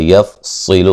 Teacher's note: یفصل صاد کو موٹا ادا کریں گے